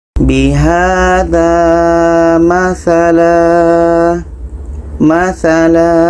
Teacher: tanwin fatha kita ubah menjadi alif pemanjangan. Contoh kedua ini terdapat dalam Surah Al-Baqarah ayat 171.